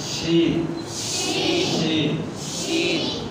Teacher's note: زبان کا درمیان اوپر کے تعلق کے ساتھ لگے گا لیکن پست آواز دیتا ہے. پست آواز کے ساتھ اس کو ادا کرنا ہے.